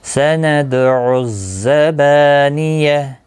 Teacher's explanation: سند، دال ساکن پر قلقلہ ہوگا، زا سکتی سے پڑھیں. با الف مدہ ہے، ایک الف کی مقدار کے برابر کھینچ کر پڑھیں گے اور گول تا ہا ساکن پڑھا جائے گا.